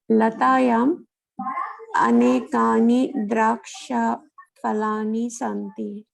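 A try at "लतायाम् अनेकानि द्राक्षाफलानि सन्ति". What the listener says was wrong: Correct.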